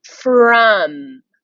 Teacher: instead of the o sounding like ah like we usually would in the word from it sounds like uh so it sounds like another short vowel sound but it's not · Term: tricky word